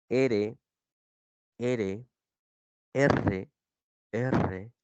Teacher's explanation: te dicen que la lengua toca los alveolos